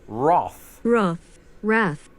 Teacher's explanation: In Britain, the A is pronounced O, as in wrath